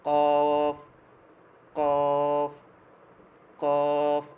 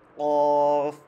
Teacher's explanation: কফ বলতেছি কিন্তু উচ্চারণটা হচ্ছে না কারণ আমি মাখরাজে লাগাচ্ছি না মাখরাজ হচ্ছে কফ মানে একদম গোড়া তারপর উপরের তালুর সাথে লাগবে গোড়াটা তালুতে লাগবে